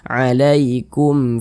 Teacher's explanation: hukumnya izhar syafawi dibaca jelas tidak berdengung kita bacaikuma karena dia tidak didengungkan baca pendek sajaikum Fima Jangan